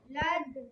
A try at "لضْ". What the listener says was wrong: قلقلہ نہیں کرنا ہے، قلقلہ لیٹر نہیں ہے. لد.